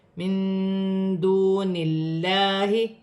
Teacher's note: نون ساکن میں اخفا ہوگا، واو ساکن سے پہلے پیش ہے، واو مدہ بن رہی ہے، ایک الف کی مقدار کھینچ کر پڑھا جائے گا۔ اللہ کی لام سے پہلے زیر ہے تو اللہ کی لام باریک پڑھی جائے گی